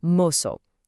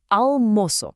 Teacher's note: you really need to place a heavy emphasis on that first syllable, moço